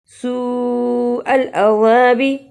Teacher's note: سو کو اس لیے لمبا کیا کہ بڑی مت پڑی ہوئی تھی اور عذابی کو جلدی پڑھا.